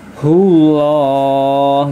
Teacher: lam jalalah atau lafadz Allah dibaca tebal ya. Karena huruf sebelumnya lomah ya, maka dibaca tebal